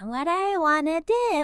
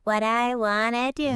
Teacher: Well, according to the source material, what often happens is the T sound at the end of what kind of connects or even transforms when it hits the D sound that starts do, and then the do you part gets heavily reduced and blended together.